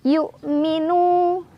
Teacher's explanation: Hamzah sukunnya ditekan ya. Yu, tapi nggak boleh ada ekornya.